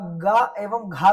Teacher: जीभ का पिछला हिस्सा आपके तालू के पिछले हिस्से से टकराता है